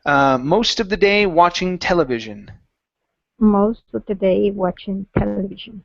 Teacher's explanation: And our last one here is television, stressed at the very beginning.